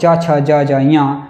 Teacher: च वर्ग च छ ज ञ और य और श का उच्चारण स्थान तालु है